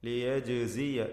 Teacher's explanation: ജീമിൻ്റെ സുക്കൂൻ ഖൽഖല നൽകി ശബ്ദം ചലിപ്പിച്ച് വ്യക്തമാക്കണം